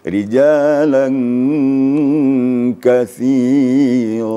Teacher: jadi bercampurlah guna dengan sedikit suara Kaf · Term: ikhfa